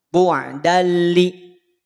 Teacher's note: setelah nun sukun atau tanwin hurufnya lam, dibacanya al dong. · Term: Idgham